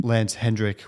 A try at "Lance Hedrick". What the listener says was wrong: No, everyone says Hendrickk. Take the in out of my name.